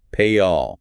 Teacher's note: Your mouth is stretched wide in a smile. Tongue is high. It gets the Y. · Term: Y glide